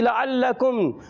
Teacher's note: عین کا مخرج حلق کے درمیان والے حصے سے